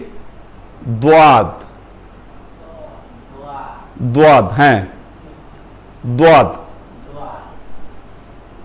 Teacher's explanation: জিবের পেছনের দিক লাগবে দাঁতের মাড়ির সাথে, উচ্চারণ হবে দোয়াদ।